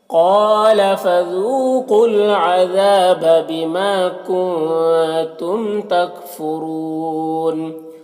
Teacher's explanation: کنتم کے نون میں اخفا ہو رہا، نون کی آواز کو ناک میں چھپا کر پڑھیں گے۔